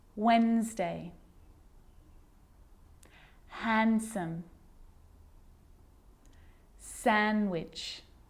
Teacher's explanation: I'm not pronouncing the D in sandwich. I'm just pronouncing the consonant N sound before it. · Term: silent